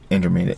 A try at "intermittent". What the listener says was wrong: You're saying intermediate, which also sounds kind of cool. Intermittent.